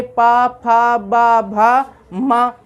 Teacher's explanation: ओष्ठ दोनों होठों से, दोनों होठों को की सहायता से हम पवर्ग का उच्चारण करेंगे,